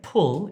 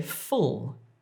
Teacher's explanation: When I'm making this f sound, my top teeth are on my bottom lip and I'm pushing air through.